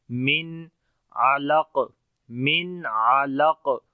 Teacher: نون ساکن کے بعد عین آ گیا جو کہ حروف حلقی میں سے ہے تو اظہار ہوگا، نون کا ظاہر کر کے پڑھیں گے